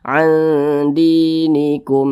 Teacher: hukumnya izhar syafawi, dibaca jelas tidak berdengung.